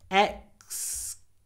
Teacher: It's the vowel. Because when we say excuse, we have a full ooh vowel with a lot of w before the z.